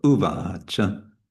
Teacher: the a is trivikrama, so that'll be long. And it's a short at the end. So uvacha.